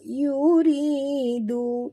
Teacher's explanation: Ra sini ra tarkik, ra tipis, kena ra baris bawah. Ridu harakat ma tabi'i, du juga du harakat ma tabi'in.